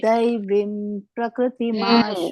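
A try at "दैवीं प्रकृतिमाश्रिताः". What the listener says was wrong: ನೋಡಿ ಇನ್ನೊಮ್ಮೆ ನೋಡಿ ದೈವಿ ದೀರ್ಘ ಇದೆಯಲ್ಲ ಅಲ್ಲಿವ ಹೇಳಿ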